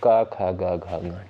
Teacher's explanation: क वर्ग के अंतर्गत जितने भी वर्ड आते हैं उनका उच्चारण स्थान होता है कंठ, यानी कंठ से उच्चारित होते हैं